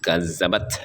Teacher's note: dibunyikan dengan hamas, artinya ada bunyi desisnya